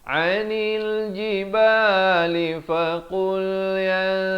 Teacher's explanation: ikhfa di sini, samarkan dua harakat.